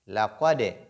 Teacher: il faut faire de l'agitation au niveau de dal, faire de la qalqala.